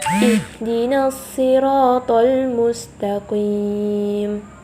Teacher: makhraj huruf H itu adalah di tenggorokan. Jadi keluarnya tipis.